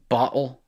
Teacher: the British bottle, where there's a hard glottal closure and stoppage there